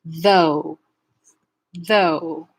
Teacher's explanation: the vowel in though is a diphthong vowel that starts off in the O shape and goes to the U shape like this. Though, though.